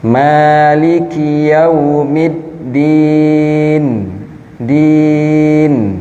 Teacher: Din panjang dan nun terakhir di sana terdapat gunnah